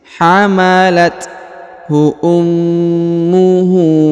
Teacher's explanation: Huruf ma ditahan dan ditekan karena terdapat tanda tasdid. Lalu huruf hu dibaca panjang 2 harokat karena di atasnya terdapat tanda harokat u terbalik.